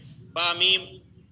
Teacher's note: دونوں ہونٹ مل کر کے با میم